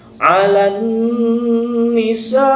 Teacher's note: Nah, dalam ilmu tajwid sama tadi, hukumnya adalah alif lam syamsiyah, tetapi memakai gunnah atau ma'al gunnah. Nah, maka ditahan 3 ketukan.